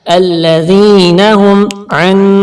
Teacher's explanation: نیلا کلر کھینچ کے پڑھنا ہے، یا ساکن سے پہلے زیر ہے، اور ذال کو نرمی سے بھی ادا کرنا ہے، اور نون زبر نا کو جلدی سے پڑھنا ہے، کھینچنا بالکل بھی نہیں ہے